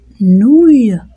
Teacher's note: Quand je prononce nouille, les lèvres sont arrondies à cause du ou